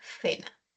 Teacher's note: Tenemos la letra C, que representa al fonema oclusivo velar sordo K en casa y a la fricativa interdental sorda za en cena